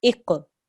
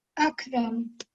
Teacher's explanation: on the kaf, we don't make a jerk, so it's just akram.